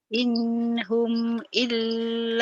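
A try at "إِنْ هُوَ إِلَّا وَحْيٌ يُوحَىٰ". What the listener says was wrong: In huwa bukan inhum. In huwa. Coba in huwa.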